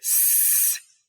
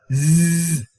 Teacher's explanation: s, voiceless, z, voiced